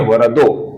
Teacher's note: आगे तीन नाम है, स्कंदधरः, धुर्यः, वरदः। इन तीन नामों के अंतिम अक्षर के आगे व्यंजन आने के पश्चात इस विसर्ग का ओ ऐसा उच्चारण हम करते हैं, अर्थात स्कंदधरः का बनता है स्कंदधरो, उसी प्रकार धुर्यः का बनता है धुर्यो और वरदः का बनता है वरदो।